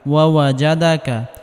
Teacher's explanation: এখানে জিমকে নরম করে পড়তে হবে অর্থাৎ জিহবার মধ্যখান উপরের তালুর সঙ্গে লাগিয়ে নরম করে পড়তে হবে। শক্ত করলে বাতাস বের হবে।